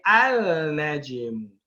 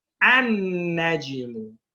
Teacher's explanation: When we put alif and lam on that, we do not pronounce the lam.